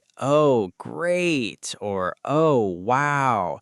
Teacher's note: we usually stretch out our words a lot more than normal. We make the vowels really long. Yes, we elongate the words.